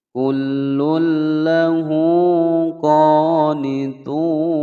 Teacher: Kullulla ada dhammatain bertemu dengan huruf lam dimasukkan tanpa didengungkan. Hukum bacaan idgham bila gunnah.